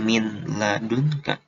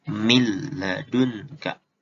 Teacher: Jadi bunyi idgham bilaguna ini huruf nun matinya dijadiin bunyi huruf la. Jadi kalau udah menjadi bunyi huruf la, berarti dia didobel kan. · tapi tidak didengung kayak idgham biguna